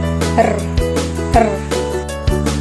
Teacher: Ang 5 ay ang liquid. Ito ay kung saan ang hangin ay ilang ulit na hinaharang at pinapabayaang lumabas, tulad ng tunog na r, r.